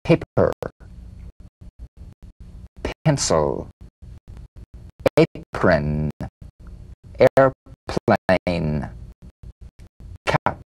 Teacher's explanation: The unvoiced labial star consonant. The whispered tap of this drum beat P is played with a light springing apart of the lips just like for the bee. On the spring away, feel a bee in a whisper without any puff of air.